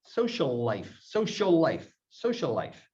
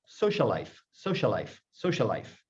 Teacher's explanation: So you've got the first word and the second word again. First word, second word, ending and beginning with the same exact sound, like LL. You should connect the words in your speech. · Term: Geminates